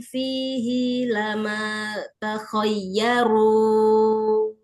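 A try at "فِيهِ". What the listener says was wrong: Fihi, jihinya jangan dipanjangkan, bukan ha domir.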